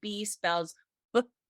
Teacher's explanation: My voice is on, and you can hear it has a different quality to it. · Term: voice on